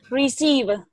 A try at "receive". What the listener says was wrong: Cái âm V này, V này mình không đọc rõ như thế. À, mình đọc thì âm rõ rồi. Receive. receive. Receive. Không, em đọc hơi nhanh.